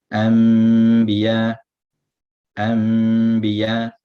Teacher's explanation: So an, biya, the an, the nun changes to a mim. Then you make the ikhfa, the ghunna. · You change the nun sakina into a mim sakina. And then you apply it with the ghunna as well. So an, biya, the an, the nun changes to a mim. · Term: Iqlab, iqlab